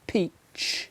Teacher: it's got a t sound before that final ch